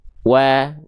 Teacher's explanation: Maka waw di sini nggak lagi kita baca waw, tapi dibaca dengan vokal A-nya saja.